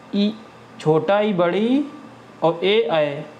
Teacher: अग्र स्वर नाम से पता चल रहा है कि इसको उच्चारण करने में जीभ का आगे वाला भाग प्रयुक्त होता है।